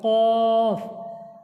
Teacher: কাফ জিহ্বের গোড়া হতে একটু আগে বাড়িয়ে তার বরাবর উপরে তালুর সাথে লাগিয়ে উচ্চারিত হয় কাফ